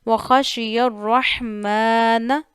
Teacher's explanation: ہا کو گلے کے درمیان والے حصے سے ادا کرنا ہے، جہاں سے آپ کے گلے کی ہڈی شروع ہو رہی ہے وہاں پہ فنگر رکھنی ہے اپنی اور ہا ادا کرنا ہے۔